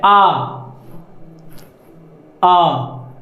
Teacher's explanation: विवृत स्वर जिसमें मुंह पूरा खुलता है